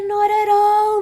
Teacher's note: Eu estava esperando ouvir todos esses T's com som de R, porque eles ficam com som de R quando eles aparecem entre vogais. Isso não quer dizer que tem que estar dentro de uma palavra.